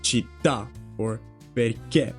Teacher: You see that the stress goes at the end.